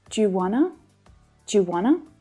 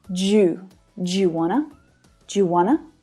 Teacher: as the auxiliary verb do reduces down to just the D sound here we can also link it just like the other examples